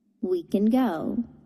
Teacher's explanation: we de-stress the can so that it sounds like kin